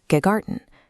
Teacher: It terminates with an alveolar nasal consonant, the letter N. Over centuries of spoken use, contemporary speakers gradually dropped that final N.